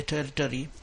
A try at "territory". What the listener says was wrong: The one word here is more of a word stress thing. Territory is how I would pronounce that. Again, territory.